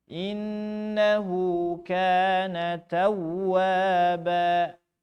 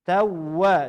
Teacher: Tawwaba tasydid. Dihentak. Hentaknya hentak langsung.